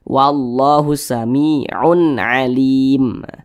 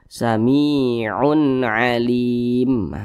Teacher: tanda baca tanwin berjumpa dengan huruf ain hukumnya adalah izhar halqi karena dia izhar maka dibaca jelas tidak berdengung jadi dibaca wallahu Samiun Alim Jangan dibaca Samiun Alim jangan dipanjangkan